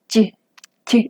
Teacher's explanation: sí hay un contacto de mi lengua con la parte media, digamos, del paladar. Y, sí alcanza a tocar.